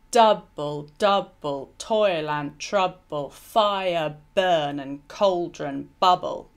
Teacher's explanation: it's got the emphasis at the beginning of each metrical foot and it's tetrameter it's tetrameter because there are eight syllables in